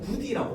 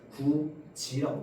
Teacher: 이 디귿과 이가 만나서 지로 발음이 됩니다